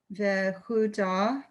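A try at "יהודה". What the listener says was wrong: Yeah, okay, Yehuda. So this is the second time you're confusing the Yud and the Vav. The Yud is shorter than the Vav.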